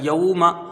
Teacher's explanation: یہاں واو لین ہے نا، اس کی حروف مدہ سے اس کی مقدار کچھ کم رکھی جائے گی ، میم کے اوپر زبر ہے، اس کو جلدی پڑھا جائے